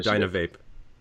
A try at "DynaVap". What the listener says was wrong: Well, we prefer DynaVap, considering that our devices contain no electronic components. So it's kind of a vape without an E, therefore it's VAP.